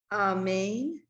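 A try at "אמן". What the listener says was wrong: Good girl.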